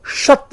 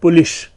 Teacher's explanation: स तथा श यानी मूर्धन्य श और दंतीय स के स्थान पर श पाया जाता है, तालव्य श।